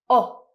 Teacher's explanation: your mouth is round your tongue is very low in your mouth and it's a very short sound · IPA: /ɒ/